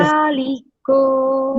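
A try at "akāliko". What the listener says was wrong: Not Aka. The first A is short. The second A is a long one. So it should be Akaliko.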